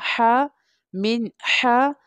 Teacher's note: Throat letter ہے، حلقیہ letter ہے۔ حا comes from the middle part of the throat